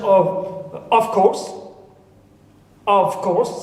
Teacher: in of, the v becomes fa, changes to fa. Why? Because here it's followed by voiceless. Okay, so v, which was voiced, becomes voiceless. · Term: regressive